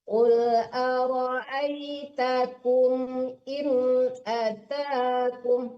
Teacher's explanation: jadi jangan in, nggak boleh lama-lama di situ. Soalnya tidak ada dengung situ ya.